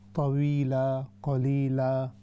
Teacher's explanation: آخر میں جو الف آئی تھوڑا سا اس کو زیادہ لمبا کر دیں.